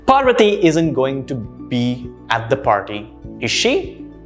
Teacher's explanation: notice how you're clarifying checking for information so obviously your intonation goes up